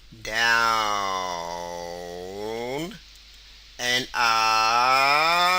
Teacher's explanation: When you say down, let the tone of your voice go down. When you say up, let your tone go up like so.